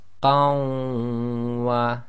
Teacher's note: When we do the assimilation, it changes to qa, we drop the noon sakin, and that joins to the waw, which you read as if it's got a shadda, so it becomes qawwa